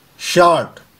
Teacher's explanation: मैं श बोल रहा हूं और फिर आ को खींच रहा हूं और र का कोई साउंड नहीं